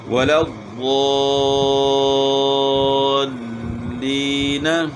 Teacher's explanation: نون مشدد ہے، تو اس میں غنہ بھی کریں گے۔ پہلے جو ہے نا وا کو ہم نے کھینچنا ہے، مد کرنا ہے، اور پھر نون کے ساتھ ملانا ہے۔